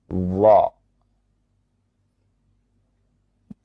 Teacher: Maka kita ucapkan dha dengan mengangkat, ya, pangkal lidah kita. · huruf dha ini ya sama dengan huruf sebelumnya, huruf ta, yakni dengan mengangkat pangkal lidah ketika kita mengucapkannya